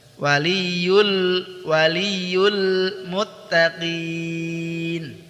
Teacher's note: lam tawasud ya, dialirkan sedikit. Ketika dia lam berharokat sukun.